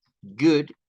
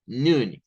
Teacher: Good es U, es una U corta, U, good, y noon es una U larga, es como noon.